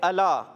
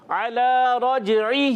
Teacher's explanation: عین حلق کے درمیان والی حصے پر زور دیں.